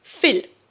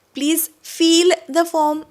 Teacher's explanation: फिल short sound आहे बघा. फिल. फिल द फॉर्म. Okay, पोटातून हवा बाहेर काढायची. फिल. फील लॉंग साऊंड आहे